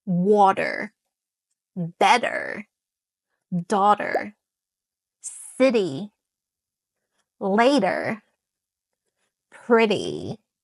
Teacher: Water has a crisp little t sound. But in American English, the t transform into a duh sound, a d sound, a soft d sound, not a hard exposive duh sound. · a soft d sound, not a hard, explosive d sound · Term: D in disguise, the disappearing T